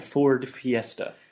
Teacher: 2 Fs, I'm biting my lip consecutively. With the TH, I'm biting my tongue.